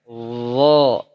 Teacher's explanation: Ya, ujung lidah bertemu dengan ujung gigi seri atas atau digigit sedikit. Zo bedanya dia pangkal lidahnya diangkat dan bahkan lengket. Zo. Coba rasakan.